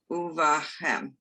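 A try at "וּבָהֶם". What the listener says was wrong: Good. Keep going. Finish the sentence.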